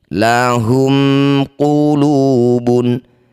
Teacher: Baca jelas mimnya. Rapatkan bibir tidak usah dengung. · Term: idhar syafawi